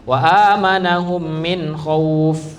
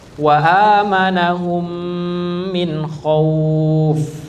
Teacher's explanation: hukum idgham mimi di sini yang mewajibkan kita untuk membaca dengan dengung di satu alif